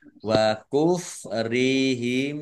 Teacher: mim sukun bertemu dengan huruf wawu bacaan idhar safawi dibaca jelas